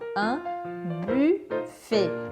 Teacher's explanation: é aquele U com biquinho, bem do francês mesmo